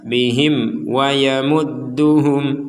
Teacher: mim mati atau mim bertanda sukun bertemu wau kita baca jelas